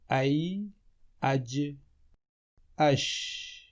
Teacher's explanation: یا، جیم اور شین کا مخرج، یہ تینوں حروف تالو اور زبان کے درمیان سے ادا ہوتے ہیں۔ یہ دیکھیے، یہ تالو ہے یعنی پیلٹ، اور یہ زبان کا درمیانی حصہ، زبان کا درمیانی حصہ۔